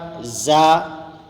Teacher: زا میں سیٹی کی سی آواز آتی ہے، اس کا اور سین صاد کا مخرج ایک ہی ہے۔